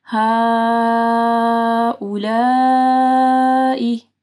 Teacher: یہاں پہ 2 بار جو ہے آپ کو مد کو 4 سے 5 حرکات کے برابر لمبا کرنا ہے